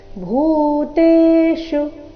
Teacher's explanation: ಭೂ ಇಲ್ಲಿ ಮಹಾಪ್ರಾಣ ದೀರ್ಘ